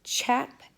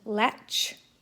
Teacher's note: There is the voiceless ch, as in chap, and the end of latch.